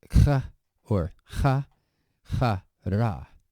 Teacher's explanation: It's really like a K, the kappa, with a puff of air after it. This is an aspirated sound, so like either K or Ch.